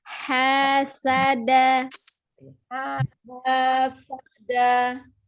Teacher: Hanya dari tenggorokan bagian tengah. Danya ujung lidahnya ada di pangkal gigi seri atas. · Sa itu ujung lidahnya di antara gigi seri atas dan bawah.